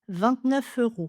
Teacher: On parle d'enchaînement parce que quand je prononce le mot 29, on entend déjà le f. Je vais juste l'enchaîner avec le mot suivant.